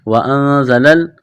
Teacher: نون ساکن کے بعد زا ہے، حروف اخفا ہے، غنہ کریں گے، آواز ناک میں چھپائیں گے، زا میں سیٹی کی آواز پیدا کریں گے